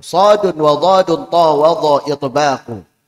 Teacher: suara antara lidah dan langit-langit atas ketika Mengucapkan huruf-huruf itbaq jadi suaranya itu terkumpul antara lidah dan langit-langit atas kumpul saking tebalnya